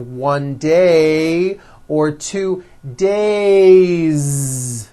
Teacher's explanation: it's days with a voiced Z ending